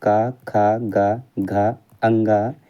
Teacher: कंठ से उत्पन्न होने वाले वर्ण है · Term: कंठ ध्वनि